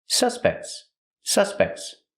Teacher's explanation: the T and suspects is between consonants so it's a stop te but you don't really hear it